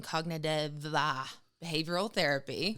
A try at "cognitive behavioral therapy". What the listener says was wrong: Because you added syllables to it.